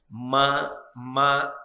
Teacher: 2 పెదవులు కలిస్తే తప్ప మకారము పలకదు.